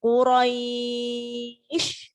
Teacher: Shin-nya tidak dibaca, hanya ditampakkan.